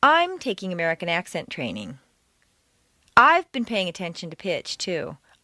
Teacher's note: if you stress I every time it will seem that you have a very high opinion of yourself